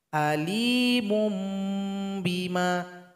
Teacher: Alimun menjadi alimum, berubah bunyinya jadi huruf mim. Alimum bima, dan didengungkan di sini. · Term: hukum bacaan iqlab